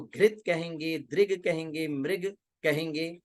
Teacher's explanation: मृग दृग घृत में री आती है रौ से इसे बचाना। मृग नहीं कहेंगे, द्रग नहीं कहेंगे, घृत नहीं कहेंगे, उसको घृत कहेंगे, दृग कहेंगे, मृग कहेंगे, तो रौ से बचाना है ना।